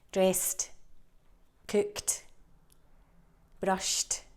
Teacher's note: So for this one, unvoiced, so no vibration, unvoiced sounds at the end of the infinitive mean we pronounce the ed as t